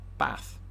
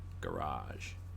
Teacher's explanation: Americans do what Southerners in England do with the word bath. Bath. They extend the A. Garage. It's a mouthful, though, the way they say, isn't it?